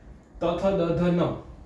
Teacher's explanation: ત થ દધ ન તેમાં દાંતને અડે છે